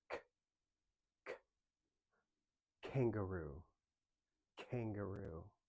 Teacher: tongue up, roof of the mouth, and you blow it out pretty quick. And we drop our tongue down to make that sound.